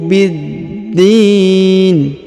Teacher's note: huruf Bi langsung disambung masuk ke huruf Dal yang berharakat tasdid